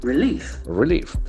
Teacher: Relief can see the accent falls on the second syllable.